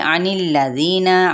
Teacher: आइन को वस्ते हल्क से अदा करेंगे